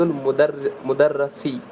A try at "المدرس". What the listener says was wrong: پھر مدرس. ارے مدرس کب چھوٹے گا آپ کا یہ را کے اوپر زبر.